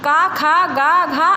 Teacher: इन व्यंजनों का उच्चारण कंठ यानी गले से होता है।